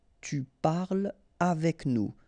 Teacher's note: Tu parles avec nous, so no liaison here between parle and avec